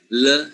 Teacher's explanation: when you pronounce the English L the blades or the sides of the tongue comes down and then the air flows out through the sides of the of the tone so you say l you say · is more like flat in the mouth than the Spanish l